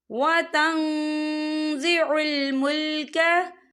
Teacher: ये देखिए वतन, यहाँ नून साकिन है, नून साकिन के बाद जो है ज़ा आ रहा है, और ज़ा जो है इक्फा का वर्ड है, तो हम यहाँ इक्फा करेंगे। नून साकिन की आवाज़ को नाक में छुपाएंगे